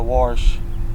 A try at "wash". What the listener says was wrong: Not a wash. The R's not silent.